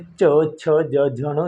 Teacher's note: तालु को जो आवाज़ टकरा कर हमारी वायु मुख से बाहर निकलती है उन्हें हम तालव्य व्यंजन कहते हैं